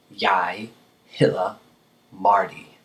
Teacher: Notice that the D in hedder is a soft D. It's not a hard D, so you wouldn't say header. You say the soft the.